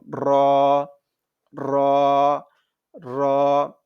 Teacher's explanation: একটু উল্টিয়ে পিঠটা লাগবে হচ্ছে উপরের তালুর সঙ্গে লাগবে এটা হচ্ছে মোটা করে একটু গড়গড়া টাইপের একটু শব্দ হবে · জিহ্বার আগার পিঠ তার বরাবর উপরে তালুর সঙ্গে লাগবে